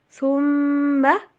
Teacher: سا کی آواز جو ہے نا اس کا جھکاؤ سین کی طرف نہیں ہونا چاہیے۔